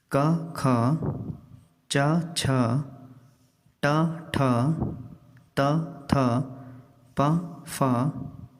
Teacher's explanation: इन वर्गों में प्रथम द्वितीय अक्षर और श, श, सा अक्षर अघोष कहलाते हैं।